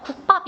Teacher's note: 뒤에 된 소리로 되는 거 바로 느껴져요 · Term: 된 소리 되기